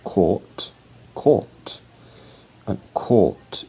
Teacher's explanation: It's O, court, and court. So you have to prolong the vowel sound to replace the missing R sound in British English